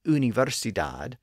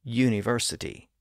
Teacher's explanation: most languages tend to pronounce the long sound of that letter as Ooh but English speakers usually pronounce it as you